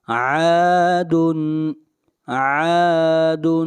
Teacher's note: عین کو کھینچ کر پڑھیں گے، الف مدہ ہے، مد اصلی ہے